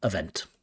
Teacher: Stress on the second syllable.